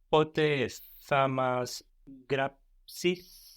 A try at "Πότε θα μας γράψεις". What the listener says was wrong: Good. And try the γράψεις a bit more r.